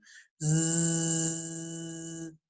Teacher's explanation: é aquele som de z, né? Z, que vibra, né? Então, que tá vibrando z, as cordas vocais ali